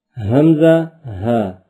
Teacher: حلق کے نیچے والے حصے سے ادا ہوتے ہیں۔